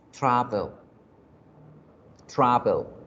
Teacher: el acento aparece en la primera sílaba